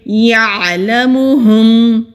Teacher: یعلمہم، یا کو عین سے ملائیں گے، جھٹکا نہیں دیں گے، عین کی آواز حلق سے ادا ہوگی۔ ہاں حروف ہلکی ہے، میم ساکن پر اظہار ہوگا یعنی کہ کلیئر ادا کریں گے۔